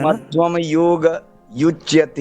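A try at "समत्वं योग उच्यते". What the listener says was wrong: उच्यते कहाँ युच्यते लगे पड़े हो। उच्यते को अलग से प्रयास करना।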